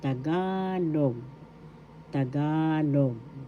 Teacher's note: The second syllable ga is where the accent is.